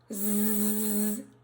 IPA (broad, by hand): z